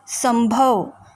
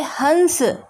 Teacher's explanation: अनुस्वार एक व्यंजन ध्वनि है, जिसका उच्चारण करते समय ध्वनि केवल नाक से निकलती है।